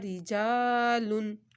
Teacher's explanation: را کے نیچے زیر آ گئی تو را پتلا